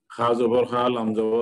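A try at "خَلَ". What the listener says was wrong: না খা না কিন্তু ভাই, এটা খ খ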